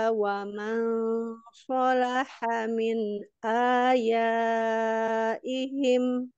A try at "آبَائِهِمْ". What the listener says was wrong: Abaihim, Mbak, bukan ya.